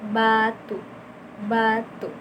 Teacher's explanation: Selanjutnya ada B. Menutup bibirnya pas awal menutup terus melepaskannya itu dengan sedikit bergetar